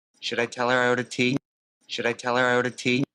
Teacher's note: Tea, and the pitch goes up. It's a yes, no question.